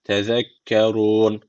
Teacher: Unutmayın efele tezekkerun ze peltek vermeyince dururken de meddi arı tecviti var. Bir elif uzatarak duruyoruz.